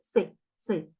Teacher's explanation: Tem o som, a pronúncia de um E rápido. A pronúncia dele vai ser rápida, tá? É um E brevíssimo, muito pequenininho. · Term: shivá